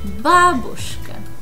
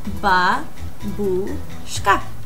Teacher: In Russian here, we put the stress on the first syllable